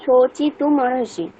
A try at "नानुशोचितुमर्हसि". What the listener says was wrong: হ্যাঁ, মানে ব্যাপারটা কিরকম ম্যাডাম দেখুন, এই যেখানে যেখানে যখন সমস্যা হবে, এই যে ম আর অটাকে আমরা আলাদা করে দিচ্ছি, সেখানে আমাদের ময়ের আগে পর্যন্ত উচ্চারণটা করতে হবে, শোচিতু, এই পর্যন্ত আমাদের স্টপ, শোচিতু, তারপরে বাকিটা একসাথে মরহসি। তাহলে এটাকে একসাথে করলে শোচিতু মরহসি।